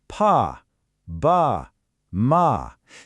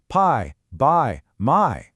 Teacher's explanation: See how for every single one your lips press together? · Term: bilabial place